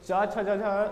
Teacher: च छ ज में कोई सा भी वर्ण बोलिएगा तो आपका जीभ जहाँ पर टकराएगा उसी को बोलते हैं तालु